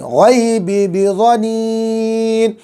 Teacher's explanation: غی میں جو ہے یا لین ہوگی، جو ہے نرمی کے ساتھ جلدی پڑھیں گے